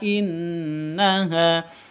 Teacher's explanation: Di sini ada nun tasydid, gunnah musyaddadah, dengung 3 ketuk.